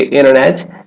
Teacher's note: The reason for this is because that N and sound and T both made average behind your top front teeth. It's easier to drop the T sound out instead of doing a double tap. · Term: vanishing T